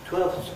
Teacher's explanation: I didn’t say the /f/ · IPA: /twelθs/